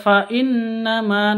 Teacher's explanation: Nun tasdid dengung bacanya gunah musyaddadah